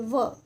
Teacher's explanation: दंत यानी दांत और होठ से काम आता है। व बोलते हैं ना, तो हमारी जो जीभ है वो दांत और होठ दोनों से मिल रही है व। ठीक है, तो इसलिए क्या हो गया? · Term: दंतोष्ठ